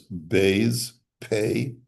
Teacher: your lips smack together when you say those letters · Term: letters of the lips